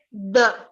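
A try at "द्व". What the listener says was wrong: You see a bhakara here? It should be dva.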